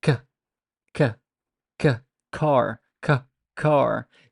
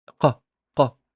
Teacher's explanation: with kaf, you would find it, but with qaf, you do not produce that puff of air. Q, q, there's no air coming off. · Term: aspiration